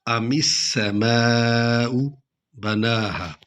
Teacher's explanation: سین کو سیٹی کے ساتھ نکلنا ہے